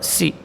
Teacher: Kemudian sin huruf safir sughra, si, huruf yang memiliki desis, ya, hamas dan rakhawah. Jadi sin ini di samping dia berdesis juga huruf yang mengalir suara dan udara